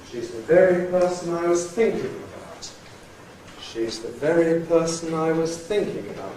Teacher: We go up for the very, start the high head on the onset very, stay up there high, and then fall down, drop down on think. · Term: high drop